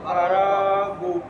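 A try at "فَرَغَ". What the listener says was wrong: গু হবে কেন? গইন জবর গ না গইন পেশ গু?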